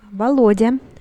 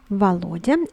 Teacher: Take notice that the first O is unstressed, so it is pronounced as A